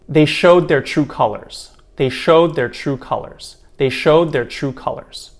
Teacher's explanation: When I say this quickly, you might notice that there's not really a d sound at the end of showed, and it almost sounds like you're saying it in the present tense form of they show their true colors. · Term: deletion